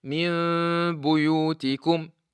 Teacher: Hide the mim with the sound of ghunna coming from the nose.